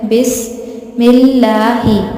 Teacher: پھر اس کے بعد نیکسٹ ہے بسم اللہ، سین سیٹی سے پڑھا جائے گا. بسم اللہ، لام باریک پڑھیں گے کیونکہ لام سے پہلے زیر ہے